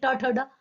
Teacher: जिसमें झटके से जीभ जाती है वो मूर्धा है